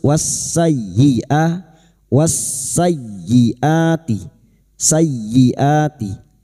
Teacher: Berikutnya masuk pada huruf ya tanpa ditahan lama-lama tanpa mendengung ya. Hanya masuk wasayyia wasayyiati sayyiati.